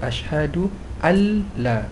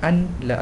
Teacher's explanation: tidak dengung dan tidak berbunyi nun mati itu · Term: idgham bila ghunnah